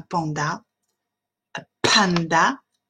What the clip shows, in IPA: ˈpændə